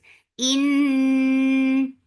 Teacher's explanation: Noon will get sipa of gunna, and gunna is akmal. So keep the sound in your nose for a longer time.